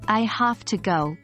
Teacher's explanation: this phrase might sound more like I have to go with the v in have being influenced by the T in to and therefore becoming more like an F sound · the V in have being influenced by the T in to, and therefore becoming more like an F sound. This happens because it's easier to pronounce it this way in fluent speech.